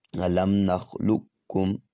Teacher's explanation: مکمل طور پہ قاف کا کاف میں ادغام ہو گیا ہے، اور قاف کی نہ صفت استعلا ہے نہ صفت قلقلہ واضح ہو رہی ہے